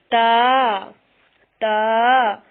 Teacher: تا کی ادائیگی میں زبان کی نوک کو سامنے والے اوپر کے 2 دانتوں کی جڑ سے لگا کر باریک آواز میں پڑھنا ہے۔